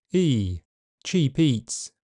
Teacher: Standard Southern involves a movement from a more central position to the front, E, cheap eats. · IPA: [ɪi]